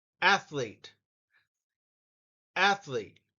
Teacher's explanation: And notice the emphasis is on the first syllable.